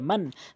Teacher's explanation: এই নুন সাকিনের পরে হামজা আসছে, এখানে হামজা রয়েছে। তাহলে আপনি এই নুন সাকিনকে কখনোই গুণনা করতে পারবেন না। এটি মিম নুন জবর মান, স্পষ্ট করে উচ্চারণ করতে হবে। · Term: ইজাহারা হাকিকির নিয়ম